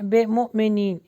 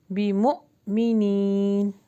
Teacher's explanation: با کے نیچے زیر یعنی کسرہ ہے تو اس کو بی کا ساؤنڈ دیں گے، ای کا ساؤنڈ دیں گے